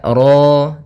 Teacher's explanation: ro tafkhim rnya tebal ya kita namakan dengan ro tafkhim